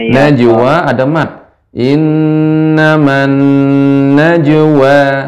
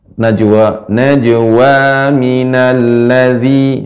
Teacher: dipanjangkan dengan cara di diayun ataupun ditekan sedikit